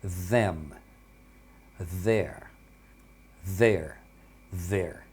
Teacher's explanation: Essas daqui elas têm o som vo, então você tem a vibração das cordas vocais na hora de falar essas palavras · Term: som voiced